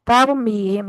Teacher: ता पुर नहीं करनी, रा पुर करनी है। तैर, तौर नहीं करना, तैर, ता को होठों को चीर के अदा करना है और रा को पुर कर देना।